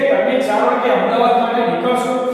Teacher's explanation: હવે વિદ્યાર્થી મિત્રો જ્યારે આ વાક્યમાં એ વાક્યમાં પ્રશ્ન પૂછવાનો ભાવ છે, બરાબર, એટલે પ્રશ્ન પૂછવાનો ભાવ છે તો પ્રશ્ન પૂછવાનો ભાવ લાવવો હોય તો શરૂઆતમાં શું કરવું પડે, નીચા સુરથી શરૂ કરવું પડે અને ઊંચા સુર સુધી લઈ જવું પડે। એટલે કે તમે 4 વાગે અમદાવાદ માટે નીકળશો તો આપણને શું થાય, નીચા સુર ઉપરથી ઊંચા સુર ઉપર જવાની ક્રિયા થઈ।